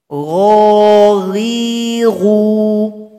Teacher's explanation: dia tidak punya sifat hamas tapi sifat jahar. Artinya suara kita tidak ada angin. Gho, ri, ru.